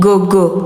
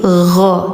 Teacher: Jadi jangan gogo tapi gho tenggorokan ujung ya.